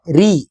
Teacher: ராக்கு கஸ்ரா வந்தால் ரி ருய் என்று வல்லினமாக உச்சரிக்கக் கூடாது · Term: மெல்லினமாக